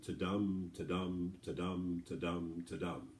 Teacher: And just like a heart has a certain rhythm, these lines are supposed to have a certain rhythm. And so there's a slight emphasis on the second syllable, slightly more than the first syllable. So it follows a sort of a heartbeat rhythm. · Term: iambic pentameter